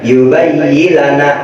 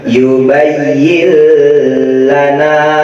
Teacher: Jadi dari huruf ya langsung masuk ke huruf lam dengan ditambahkan tasjid. Jadi jangan dibaca yubayyilana, tapi ditekan dulu di huruf lam.